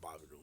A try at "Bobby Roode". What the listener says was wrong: No. They don't say the D.